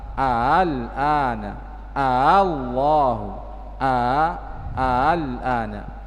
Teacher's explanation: yang kedua dibaca tasil, yaitu antara hamzah dan alif, al-ana, Allahu, al-ana, ya, dibaca antara hamzah dan alif.